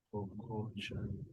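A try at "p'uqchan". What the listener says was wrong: Pero mira cómo se pronuncia, observa la fonética, observa. Pocoshan, pocoshan. Pocoshan, no dice poco, entonces sería Pocoshan, Pocoshan.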